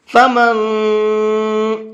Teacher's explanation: فمن شاء، یہاں پر یہ نون ساکن ہے اور نون ساکن کے بعد میں شین ہے، شین اخفا کے حرفوں میں سے ہے، تو اب یہاں پر نون کے اندر ہم اخفا کر کے پڑھیں گے، تھوڑا سا ناک میں آواز کو چھپا کر کے پڑھیں گے